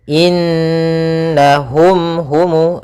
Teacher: suara mimnya harus dibaca dengan jelas dan tidak ditahan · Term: izhar syafawi